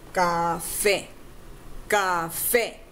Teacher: The stress is on the fe, right?